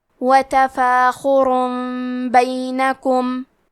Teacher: ہم تنوین کو ہلکی میم میں بدل کے غنہ کے ساتھ یہ حکم کو ادا کریں گے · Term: قلب